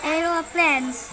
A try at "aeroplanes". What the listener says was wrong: No, bukan planes. Aeroplanes. Once again.